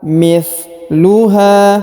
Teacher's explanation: Huruf H dibaca panjang 2 harokat karena di depannya terdapat alif ya. Kita baca panjang 2 harokat.